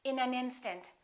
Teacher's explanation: We would connect the final consonant to the next vowel. So this N and this A would be said together.